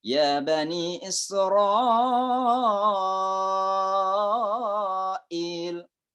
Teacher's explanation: dalam satu kata Israil maka itu dibaca 6 ketukan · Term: wajib muttasil